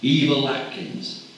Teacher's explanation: As plain Miss Turner, you might not hear the dark L on Eva Turner, but when she marries Mr. Atkins, not only she, but her Bristol L blossoms. It's the linking L again.